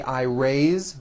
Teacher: even though it is spelled with an S it's pronounced with a voice z ways so we say I raised with a voice the ending